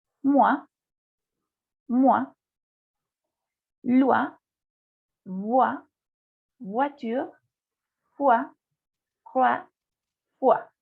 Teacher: Après, O, I, se prononce toujours wa. Cuando tienen el sonido de la O, las vocales O, I, juntas, va a tener este sonido, wa.